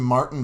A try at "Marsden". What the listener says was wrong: There's a D in there.